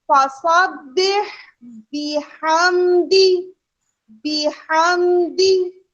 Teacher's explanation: बा के बाद हाँ मौजूद है लेकिन वो दूसरी हरकत में है, हरगिज मिला के नहीं पढ़ना, हरगिज ऐसे नहीं पढ़ना कि एक दूसरे पर चढ़ता हुआ महसूस हो।